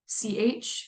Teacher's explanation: that sh sh which is a frickative sound so you goch if you kind of break down that CH sound it's really the combination of T and sh put together to make an africant and then lastly is voicing so you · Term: affricate